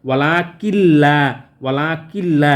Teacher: বাট এখানে কিন্তু গুন্না হবে না কারণ নুন সাকিনের পরে লাম এসছে সো এখানে কোন গুন্না করা যাবে না ওয়ালা কিল্লা ওয়ালা কিল্লা লামের উপর তাশদি পড়তে হবে ওয়ালা কিল্লা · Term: গুন্না ছাড়া